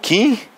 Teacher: O esse N, na verdade, é só um sinal, é só uma marca de nasalização, né? Som nasal.